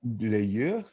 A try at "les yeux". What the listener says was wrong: Avec la liaison, les yeux. Hein, les yeux.